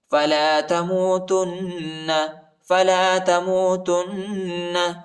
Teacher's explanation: تا کو نون کے ساتھ ملائیں گے اور غنہ کریں گے